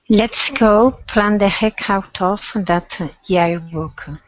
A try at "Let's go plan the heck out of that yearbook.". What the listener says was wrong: So also I'm hearing yets instead of let's. Yearbook.